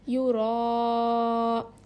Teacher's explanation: را زبان کے سائڈ کے حصوں کو لیفٹ اور رائٹ سائڈ کے داڑوں کو لگانے سے را ادا ہوتا ہے · حرف مدہ کے بعد حمزہ اسی کلمے میں ہو تو مد متصل ہوگا. اس کو 5 الف کے برابر کھینچ کر پڑھیں گے